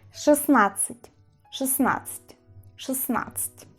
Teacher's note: La D en esta situación desaparece. Yo no digo 16, ni siquiera suena la D, como veis.